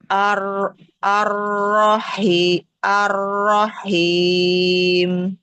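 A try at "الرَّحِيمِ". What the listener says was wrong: Masih him, Kak. Ar-Rahim. Bukan, bukan him, Ar-Rahim. Ar-Rahim. Ha, ha. Ha.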